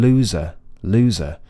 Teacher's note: if I try to make a big difference and I tried to add loads of vibration to the final Zed I might accidentally end up adding a vowel sound afterwards